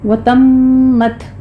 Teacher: وَتَمَّتْ میں میم مشدد ہے، غنہ واجبہ کریں گے، 2 کاؤنٹ کرنا ہے، اور تا پر ہمس ہوگا